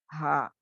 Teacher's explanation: ہا جو آ کر اندرونی حصے سے نکلتا ہے, یعنی it's from the deep part of the throat